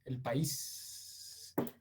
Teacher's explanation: Petro por alguna razón alarga las fricativas alveolares sordas